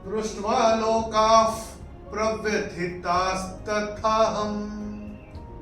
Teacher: चौथे चरण में क के बाद विसर्ग के बाद का अक्षर है प, तो विसर्ग के बाद अगर प आएगा तो विसर्ग का उच्चारण होगा फ। फ जैसे फूंक मारते हैं वैसा।